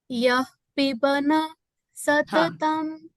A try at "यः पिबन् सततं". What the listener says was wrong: okay, that's when it's a half letter. When it's a half letter, there is a line, right? So when it's a half letter, it's not pibana. I think that's generally in sometimes if our language is Hindi, we tend to tell that it's piban satatam. And even in the last one, it's prachetasam akal.